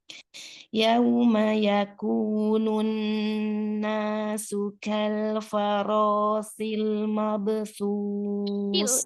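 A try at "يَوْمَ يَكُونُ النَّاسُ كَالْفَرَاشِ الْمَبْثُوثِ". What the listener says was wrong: Itu shin. Shin ya. Tafashil ya, shin. Shil, ulang ini. Shin ya, belum dapat nih.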